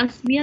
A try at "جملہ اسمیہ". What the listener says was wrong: Okay, ये इस्मिया है, अस्मिया नहीं है, जुमले इस्मिया।